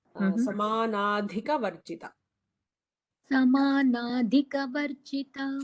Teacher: Try to emphasize the dha in samanadhi is a mahaprana. Just when you practice, just underline that.